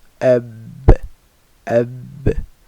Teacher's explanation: Now the letters ba, waw, and mim are pronounced from the lips. Ba is pronounced with the dry portion of the lips touching.